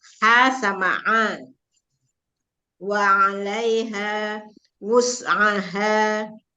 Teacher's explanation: Jadi harus dipelajari lagi mengenai makhraj ain. Ain itu ada di tengah tapi ada sengau ya. Jadi dia satu tempat dengan ha, tenggorokan tengah.